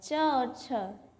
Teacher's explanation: च और छ हमारा तालु वर्ण जो है, इसका उच्चारण स्थान तालु है।